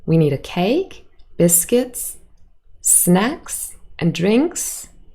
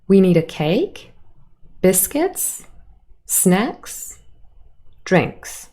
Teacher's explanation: like okay she's done this is the end of the list the last item has a falling intonation · This is the end of the list. The last item has a falling intonation. So the pattern here is really, you have rise, rise, rise on however many items you list, and the last one is a fall.